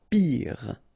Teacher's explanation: Final E not pronounced, so R at the end.